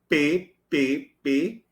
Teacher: o articulador ativo é o lábio inferior, é ele que se mexe, ó, P, P, P, e o articulador passivo, o lábio superior.